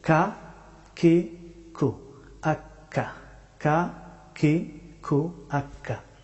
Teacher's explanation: কাফ হরফটি উচ্চারিত হয় জিহ্বার শেষের অংশ থেকে, তবে একটু সামনের দিকে আগ বাড়িয়ে কাফ হরফটি উচ্চারিত হয়।